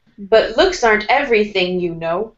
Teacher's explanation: you can also make your voice go down on the word no, because this is a statement.